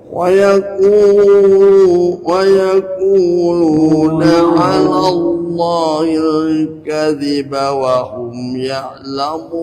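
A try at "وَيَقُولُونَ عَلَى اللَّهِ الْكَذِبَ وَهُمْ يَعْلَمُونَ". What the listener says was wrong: Ainnya ditekan ya'lamun. Ya'lamun, diulang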